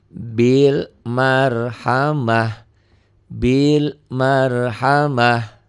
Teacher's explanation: Ya, taknya berubah menjadi ha karena ini tak marbutoh. Fil ardi, fil ardi dihentikan jadi fil ard, fil ard.